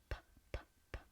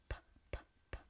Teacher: In English, P is voiceless, so the vocal cords don't vibrate. To correct this mistake, focus on producing the P sound but without vibrating the vocal cords.